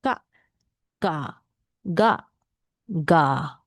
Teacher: So you pronounce as like Malay word kak. Now just you notice the sound is at the throat. Kak. So when you put your hand on here, you should feel that vibration.